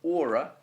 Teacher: you naturally stress the o of aura because it's a two-syllable word and you never stress the last syllable of the two syllable words so there you've got the word stress and the meter both